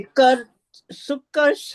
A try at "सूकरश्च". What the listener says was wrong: हाँ, सुकरश्च है ना, सुकरश्च। सुकरश्च। ऊ की मात्रा भी उसमें है ना, स में, इसलिए आपने ऊ की मात्रा स्किप कर दी थी।